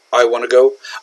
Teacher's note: I'm running together the want to. So, if I want to enunciate it clearly, then I would say I want to go.